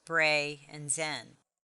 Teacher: the word brazen has two syllables bray and zen the first syllable is accented because the syllable ends in one vowel it is an open